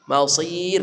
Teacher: rnya dibaca tipis tarkik karena sebelum ra ini ada ya mati didahului oleh harakat kasrah